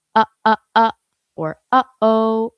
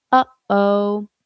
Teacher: It's your vocal folds coming together before you even start to make sound. Uhoh. You might even be able to feel this if you start to say uhoh but hesitate. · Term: glottle onset